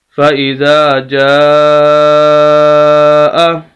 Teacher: فائزا، جیم زبر الف مد جا، حمزہ زبر آ، جاء، فَإِذَا جَاء، مد کو کھینچنا ہے 5 الف کے برابر